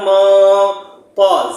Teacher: نون ساکن کے بعد طا آ گیا تو یہ نون کو آواز کو ناک میں چھپا کر پڑھیں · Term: اخفا